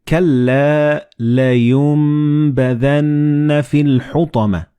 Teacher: the noon and ba, they will be assimilated together and you will pronounce them as meme.